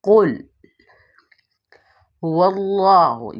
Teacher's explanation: واو جو ہے ہونٹوں کی کلائی سے واو ادا ہوتا ہے · یہاں پہ ہا جو ہے یہ والا ہا حلق کے آخری حصے سے ادا ہوتا ہے، اس لیے اس کی ادائیگی حلق کے آخری حصے سے کی جائے گی۔